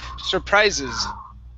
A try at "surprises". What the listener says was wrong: Okay, now control your tongue on that R. You're saying surprise, and you're rolling the R. Push the tongue down on the R.